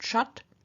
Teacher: What we get is in the nominative, vocative, accusative, the sh turning into t